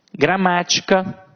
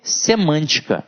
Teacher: observem que está na anti penúltima sílaba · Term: proparoxítonas